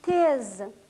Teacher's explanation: В крымско-татарском языке звуки Т, Д, Н не сильно смягчаются перед гласными Е, Ё, Ю, Я. Например, мы произносим тез, произносим кетр.